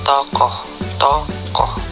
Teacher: Vokal O. Vokal belakang, sedang bawah, bundar, semi terbuka.